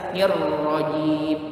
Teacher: Nir ro, nir ro, nir ro, nir ro, nirrojin. Lagi jimnya tidak boleh ada hamas, tidak boleh ada angin keluar seperti bunyi c, nirrojin, jim, nggak boleh begitu, nirrojin. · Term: jahar jelas